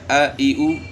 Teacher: یہ ہے حمزے کی آواز ہے گلے کے آخر سے. اس طرح ہا کی آواز ہ ہی ہو.